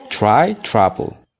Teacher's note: Kunis t dhaan eegala garuu r'n waan itti fufteef tr jechoota tr dhaan eegalan gara chaatti pronounce goona jechuudha.